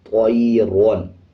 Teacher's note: جب را کے اوپر دو زبر آ جائیں یا ایک زبر آ جائیں یا پیش آ جائیں, ایک پیش آ جائے یا دو پیش آ جائیں, یا را کے اوپر جزم ہو اس سے پہلے والے الفاظ کے اوپر زبر یا پیش آ جائے تب بھی را کو پر یعنی موٹا پڑھا جاتا ہے